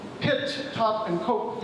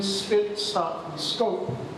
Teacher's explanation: in pit, top, and cope, you've got that aspiration. But in spit, stop, and scope, you don't have it